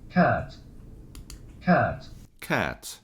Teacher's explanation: Quer dizer que o som A ele tá misturado com um e.